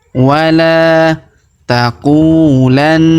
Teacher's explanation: huruf na kita tahan dan kita tekan, serta kita dengungkan 2-3 harokat karena di atasnya terdapat tanda tasdid ya.